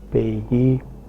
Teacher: in Kashmiri, a ya or a wa is inserted before different vowels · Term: consonant insertion